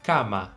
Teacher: como o som do A tem que ser muito aberto, então a gente tem que dizer cama.